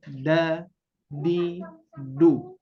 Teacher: Huruf dal itu kan ujung lidah menempel ke gusi lah ya, ke gusi gigi seri atas atau ke pangkal gigi seri atas. Maka pengucapannya tipis aja, da, di, du.